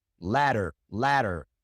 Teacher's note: That really quick D sound that you make when you pronounce ladder. That is the R sound in Spanish.